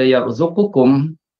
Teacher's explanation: idgham kabir pada yarzuqukum, kalimah yarzuqukum pertemuan qaf dengan kaf